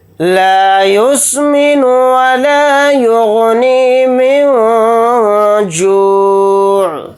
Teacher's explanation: نون کی آواز کو ناک میں چھپا کر اخفا کے ساتھ پڑھیں گے